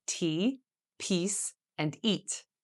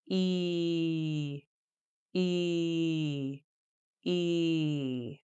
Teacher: E is a tense vowel, so the muscles in your lips and tongue should be tense when pronouncing it. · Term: E sound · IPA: /i:/